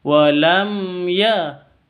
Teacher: mim sukun bertemu dengan ya bacanya jelas jangan dibaca dengong ya tapi jelas karena izhar syafawi Wam ya mim sukunnya jelas ynya juga jelas Wam yajalni yajalni